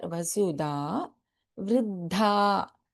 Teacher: Please note there is an alpa prana da here, vasudha, vriddha. So we have in vriddha both alpa prana da and mahaprana dha.